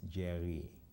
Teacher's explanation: The R is somewhat akin to the French or Arabic R. It's articulated further back.